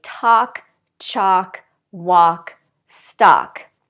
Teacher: forget about the L we don't say it at all the vowel is ah ah and we say talk chalk walk